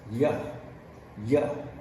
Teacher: if you keep going past the alveolar ridge and keep going up you will run into the hard palate and there you have the sound like yup yup the y sound